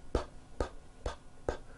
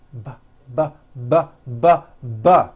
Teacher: You see that everything here stays the same. The only difference is my vocal cords are either vibrating or they're not vibrating.